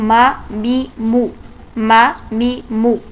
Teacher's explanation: हम दोनों होठों के बाहर वाले हिस्से को नरमी से जब आपस में टच करते हैं तो मीम अदा होता है